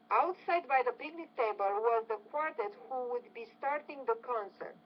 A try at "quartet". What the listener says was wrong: I would say quartet. The quartet, the stress on that second syllable, not the first.